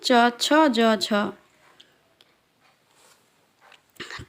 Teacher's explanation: च छ ज झ का उच्चारण स्थान तालु है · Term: तालव्य व्यंजन